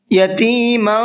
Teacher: تنوین کے بعد میں اگر اخفا کے حرفوں میں سے کوئی بھی ایک حرف آ جاتا ہے تو وہاں تنوین کی آواز کو تھوڑا سا ناک میں چھپا کر کے پڑھتے ہیں